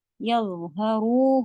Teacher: یظ میں بھی آواز چلتی ہے، ہیوی بھی ہوتا ہے، زبان بھی باہر رہے گی، اور فلسفیہ بھی ہے، ہیوی بھی ہے اور آواز چلنی بھی ہے.